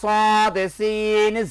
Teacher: জিহ্বার আগা সামনের নিচের দুই দাঁতের আগার সঙ্গে লাগাইয়া